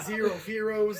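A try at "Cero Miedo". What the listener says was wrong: It's not an F, it's an M.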